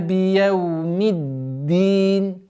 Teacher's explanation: нужно обращать внимание на удвоенность даль с неким интенсивностью, потому что если этой интенсивности не будет, она переходит в та.